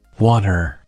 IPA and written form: ˈwɔːɾər (water)